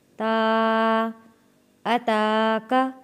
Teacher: ہل اتاک، حمزہ کے اوپر زبر ہے آ، تا کے اوپر کھڑی زبر ہے، 1 الف کے برابر کھینچ کر پڑھیں گے